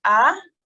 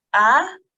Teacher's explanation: the alif Madia elongates the letter previous to it for two seconds